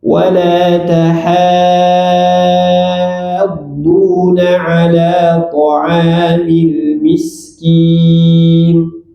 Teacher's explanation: Jadi, H-nya tipiskan. Jangan terbawa huruf D jadi tebal.